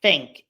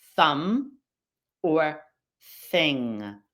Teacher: The TH in the word think in the beginning of the word does not have the vibrating vocal cords.